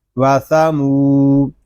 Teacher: یہاں میم کو ہم ایک الف تک کھینچ کر پڑھیں گے کیونکہ یہاں پہ واو مدہ ہو رہا ہے۔ واو مدہ اس لیے ہو رہا ہے کہ واو ساکن سے پہلے پیش آ گیا ہے۔